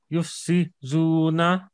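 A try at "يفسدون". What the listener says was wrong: no yuf si du na dal sound dal no not zal dal d sound yuf si du na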